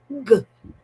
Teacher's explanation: so there is vibration so that is voice